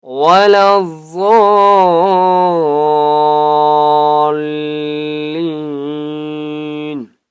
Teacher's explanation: اس ضاد کو بھی ہم نے موٹا کر کے پڑھنا ہے، اور ضاد کو ہم نے 4 سے 5 الف کے برابر کھینچ کر پڑھنا ہے